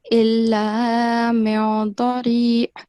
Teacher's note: we'd have to conceal the sound of noon. Okay? So for that, you have to make a slight nasal sound.